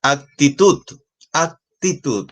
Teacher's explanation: tenemos ahí una dos tres sílabas y la fuerza de voz está en la última sílaba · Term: sílaba tónica